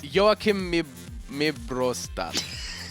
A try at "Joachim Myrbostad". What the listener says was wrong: Where did you get the second R? Joachim? Myrbostad.